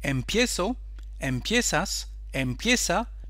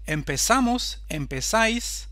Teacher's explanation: So we say this is the diphthong verb because from one vowel, E, we have now two, I-E. The vowel E becomes IE, so that's why we call it a diphthong.